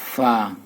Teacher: হবে চিনোটা জোয়া জাল সা 14 নাম্বার মাকরাজ 14 নাম্বার মাকরাজ নিচের ঠোঁটের পেট সামনের উপরের দুই দাঁতের আগার সঙ্গে লাগাইয়া